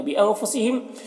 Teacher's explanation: نون میں اخفا ہو رہا ہے اور یہاں پر میم میں اظہار شفوی ہو رہا اس کو بھی جلد پڑھنا ہے.